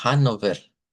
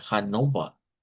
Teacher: Entonces, lo primero es eso, que aunque la ciudad se escribe con no se pronuncia Hanover, se pronuncia Hanova, porque los locales de ahí no usan ere al final, vea. O sea, ellos suenan con lo que es esa a que convierte en la R a una A, en realidad una A media.